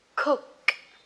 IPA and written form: kʊk (cook)